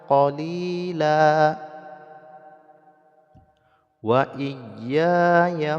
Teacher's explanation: Kemudian tanwin bertemu dengan waw, idgham ma'a gunnah ataupun idgham bi gunnah, yaitu masukkan bunyi tanwin ke dalam huruf waw kemudian didengungkan qadar 2 harokat